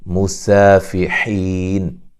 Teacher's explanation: غین کو موٹا ادا کریں گے، یا لین ہے، اور را کو موٹا ادا کریں گے۔ مسافحین، سین کو باریک سیٹی سے ادا کریں گے